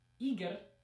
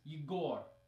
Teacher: In the first one, it's on the first syllable, Igor, and in the second word, it's on the second syllable, Igor. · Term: stress